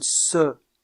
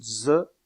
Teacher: la consonne ce est sourde tandis que la consonne ZE est sonore